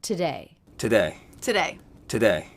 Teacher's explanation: Always the first syllable is reduced to the schwa sound, but I'm noticing that these T's are all true T's and not flap T's.